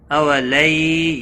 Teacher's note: یا لین ہے، تھوڑا نرمی کے ساتھ کھینچ کر ادا کریں گے۔